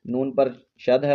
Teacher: نون پر شد ہے، غنہ کر کے پڑھیں گے، آواز کو ناک میں چھپائیں گے